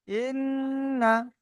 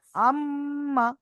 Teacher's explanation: এখন তাসদিদ যদি মিম অথবা নুনের উপরে থাকে এই তাসদিদটি মিম অথবা নুনের উপরে থাকে তখন মিম অথবা নুনটাকে এক আলিফ পরিমাণ গুণনা করে পড়তে হয়।